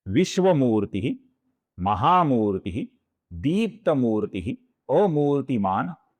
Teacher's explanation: इस शब्द में मु दीर्घ है और ती ह्रस्व है।